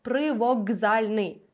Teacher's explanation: глухий буде шукати собі дзвінку парочку тобто к перетворюється на Ґ